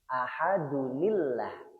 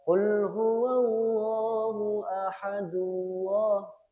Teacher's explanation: tanwinnya berubah menjadi huruf nun di kasrah bacanya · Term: nun wiqayah